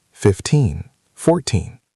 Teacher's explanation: For the teen numbers, 13 14 15, the stress is usually on the second syllable, the teen part